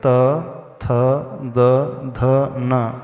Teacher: जब हम त वर्ग का उच्चारण करेंगे त थ द ध न उसमें हमारी टंग और दांतों का प्रयोग होगा